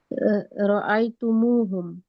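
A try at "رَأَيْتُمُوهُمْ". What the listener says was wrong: माशाल्लाह,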